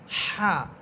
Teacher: হা এটা কণ্ঠনালীর মধ্যখান থেকে উচ্চারণ করবেন, বাতাস বের হবে এবং বাতাস বের হওয়ার সময় বাতাসের শব্দ হবে।